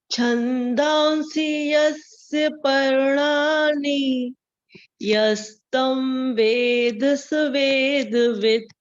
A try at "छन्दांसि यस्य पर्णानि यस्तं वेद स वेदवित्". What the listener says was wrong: Perfect ma'am, very good.